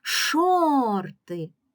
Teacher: склади перший склад Шор другий склад ти гукаємо слово шорти шорти більшою силою голосу ми вимовляємо перший склад Шор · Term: наголошений